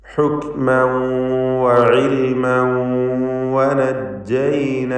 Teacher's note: ആവർത്തിച്ച് തൻവീനിന് ശേഷം വാവ് വരുന്നു. ഇദ്ഗാം ബിഗുന്ന നാഖസ് നൽകി വാവിലേക്ക് തൻവീനിനെ ലയിപ്പിച്ച് മണിച്ചുകൊണ്ട് ഉച്ചരിക്കണം. ഭാഗികമായി ലയിപ്പിക്കുകയാണ്, പൂർണ്ണമല്ല.